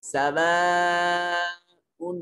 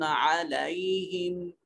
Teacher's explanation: सवाउन अलैहिम, और ये फर्क जहन में रहे कि सवाउन में जो हमजा है इसको अलहदा अदा करना है खाली मुंह से, और अलैहिम में आइन को जो है ये हलक से अदा करेंगे।